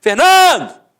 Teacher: Então você mata que a penúltima sílaba é a sílaba tônica.